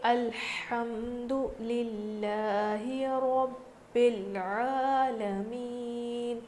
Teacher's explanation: لفظ اللہ کے لام سے پہلے زیر ہے، اسی لیے ہم لفظ اللہ کے لام کو باریک پڑھیں گے · یہاں پر را پر زبر ہے اسی لیے را کو ہم موٹا پڑھیں گے